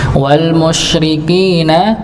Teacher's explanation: hanya sekedar nafasnya disebar bukan dihembuskan disebar